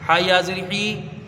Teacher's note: را کے اوپر زبر ہے جلدی پڑھیں گے اور را کو پر پڑھیں گے کیونکہ زبر ہے